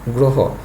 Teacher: হ ধ্বনির সাথে অ আছে, অ এর উচ্চারণটা হয়ে গেলো উ এর মতো, তো এটা হলো গ্রহ।